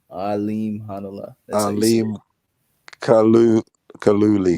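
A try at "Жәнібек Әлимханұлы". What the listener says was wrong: Nah, Hanala. No, there's no Kalu. It's Hanala. You don't even have to say the K. It's silent. Yeah, it's Hanala. Alim Hanala. Hanala.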